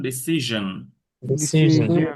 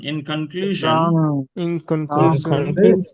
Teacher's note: শন না, একটু vocal cord লাগান